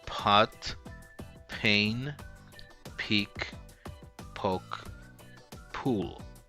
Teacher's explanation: that short puff of air at the end of the sound is the aspiration